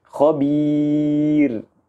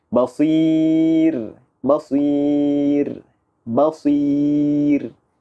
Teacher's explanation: Apabila kita hendak mewakafkan huruf ra, sebelumnya tanda ya sukun, pembacaan huruf ra di sini kita harus membacanya dengan bacaan yang tipis. · Ra yang tipis. Kerana sebelumnya adalah huruf ya sukun. Ya yang mati di situ.